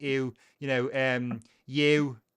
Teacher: Number 6, which would be oo in GB, is kind of ew in Scouse.